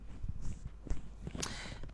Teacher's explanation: tepi lidah bagian belakang menekan dinding gigi geraham atas atau gusi. Berarti ini bagian dinding dalam, bukan gigi bawah, gigi geraham itu, bukan yang di bawahnya ya. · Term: huruf dot